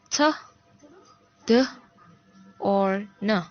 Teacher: Constriction is at or in front of the alveolar ridge. If it's in front of the palate, it is anterior. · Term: plus anterior